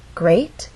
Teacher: That means this is the point where our voice will go up. Great has one syllable, so we only have one syllable to make our voice glide up. Great. And we're using rising intonation because this question requires a yes or no answer.